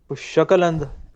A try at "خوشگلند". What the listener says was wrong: ایرانیا خیلی خوششکل، فارس خوشگل ہے، خوششکل نہیں ہے، خوشگل،